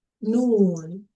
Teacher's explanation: Noon is pronounced by using your tongue and also also your nose. · when you pronounce the letter Noon, you have to use both your nose and also your tongue